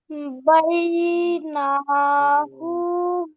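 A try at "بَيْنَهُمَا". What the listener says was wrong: হুটা টান হয়ে যাচ্ছে বোন, হু টান হবে না। হা টান হবে না। বাইনা হুমা।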